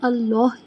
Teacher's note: اللہ کا جو ہاں ہے وہ حلق کے آخر سے ادا ہوتا ہے